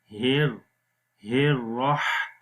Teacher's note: हा गले के दरमियान वाले हिस्से से पढ़ा जाता है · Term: हा की आवाज